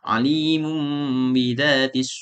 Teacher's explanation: mengubah nun mati atau tanwin menjadi mim pada huruf ba